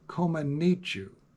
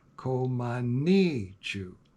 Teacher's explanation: She's also very clear that the accent is to be placed on the 3rd syllable, ni.